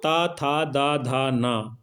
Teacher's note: त था द धा न ये सब क्या है दंत से बोले जाते हैं लेकिन जो ट है ये दंत से बोला नहीं जाता है